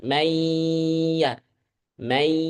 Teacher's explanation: ada suara dari hidung dan mulut. Tidak hanya dari hidung saja may atau tidak hanya dari mulut aja may.